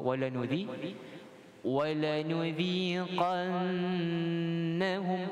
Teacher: bila kita membacakan nudhi, muncung saja nun tanpa tebalkan dia. Jangan dibaca nudhi, no, nu, nudhi, nipis.